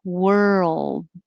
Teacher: my tongue is curled back and then the l